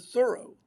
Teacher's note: The H sounded and the accent on the first syllable